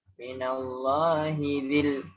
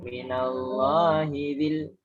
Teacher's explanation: Nah, jangan minallahi dzi. Dzi itu mat tabi'i. Hinya pendek.